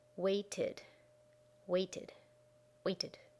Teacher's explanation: wait only has one syllable but when we make it past tense it becomes two syllables